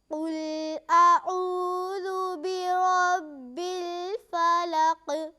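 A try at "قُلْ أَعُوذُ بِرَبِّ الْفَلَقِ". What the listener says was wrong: आइन को अच्छी तरह अदा कीजिए। क़ुल अऊज़ु बिरब्बिल फ़लक़।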